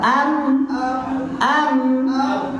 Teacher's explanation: Nah, bibir dia tak campur dengan gigi.